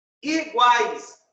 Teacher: Nós temos uma semivogal, uma vogal e uma semivogal. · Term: tritongo